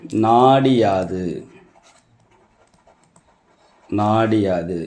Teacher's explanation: கி என்ற எழுத்தோட ஒரு மாத்திரை அளவு ஒலிக்க வேண்டிய அளவு அரை மாத்திரையாக குறைந்துவிடும்